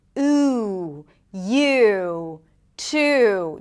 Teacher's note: Here the back of the tongue goes up, it's really high up in the back. The lips round, it is a longer sound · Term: tense oo